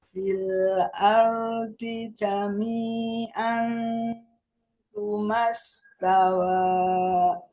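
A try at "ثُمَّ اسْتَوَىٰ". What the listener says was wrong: Tumas. Ada mim bertasydid, Bu. Didengungkan. Dari summa.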